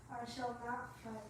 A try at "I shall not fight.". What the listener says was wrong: You don't sound like you're really serious. Govinda, I shall not fight. Say it like that. You gotta hit your hand down like that.